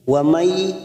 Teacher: nun bertemu ya, idgham bi gunnah, kita tekan selama 3 harokat, siap masuk ke huruf ya.